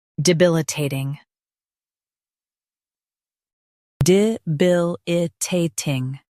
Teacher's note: Emphasize bil and keep ta ting smooth.